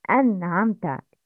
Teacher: Noon Sakina must be characterized by izhar without gunna.